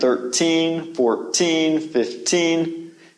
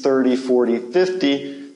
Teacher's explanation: the emphasis came at the end 13 14 15 and usually with numbers like these 30 40 50 the emphasis comes at the beginning